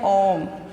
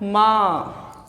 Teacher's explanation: ओम का जब हम उच्चारण करते हैं तो लंबा लेते हैं ओम, उसमें ये प्लुत स्वर लगता है। 2 स्वरों से भी अधिक समय लगता है।